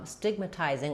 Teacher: Letter A is going to be the schwa. Stigmatizing, we have secondary stress on the tizing syllable, which means the T is going to be a true T, tizing.